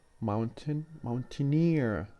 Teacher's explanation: the stress on the suffix itself rather than the original word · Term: primary stress